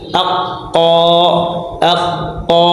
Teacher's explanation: lisan pangkal lidah makhraj ini terbagi menjadi dua bagian yaitu satu pangkal lidah yang menyentuh atau membentur langit-langit atas yang berdaging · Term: aqsal lisan